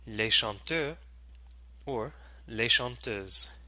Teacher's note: S is added to the end of the plural noun, but it's not pronounced. It doesn't change the pronunciation of the word unless there is a liaison.